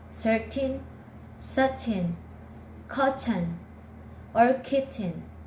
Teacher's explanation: these words are pronounced with a glottal t